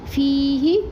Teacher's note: فیہ یہاں پر یا مدہ ایک الف برابر پڑھیں گے اور ہا کی زیر کو کھینچیں گے نہیں